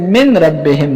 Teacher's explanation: وقد ادغمت النون في الراء نون ننوته ده پرا کې بغنه او بغیر غنه من ربهم